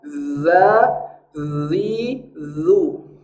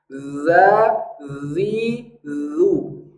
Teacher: huruf dalal ada kandungan bunyi z-nya tapi tidak sama huruf zzal makhrajnya adalah ujung lidah ke ujung gigi seri atas maka makhrajnya harus pas di ujung gigi